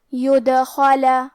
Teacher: کلمت يدخل میں حرف دال پہ جزم ہے کیونکہ دال بھی حروف القلقلہ میں سے ہے لہذا ہم یہ حرف کو ہلاتے ہوئے یہ کلمہ کو پڑھیں گے